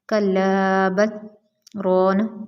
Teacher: رکتے ہیں لیکن سانس نہیں توڑتے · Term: سکتہ